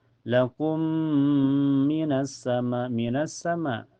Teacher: Karena alif lam ketemu huruf syamsiah yaitu sin. Cara bacanya langsung masuk ke sin ya. Alif lamnya tidak terbaca. Dan cirinya setelah alif lam ada huruf yang bertasyid yaitu di sin. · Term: alif lam asyamsiyah